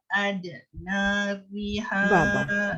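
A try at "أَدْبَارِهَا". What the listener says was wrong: Ba. Titik di bawah apa? Adbariha.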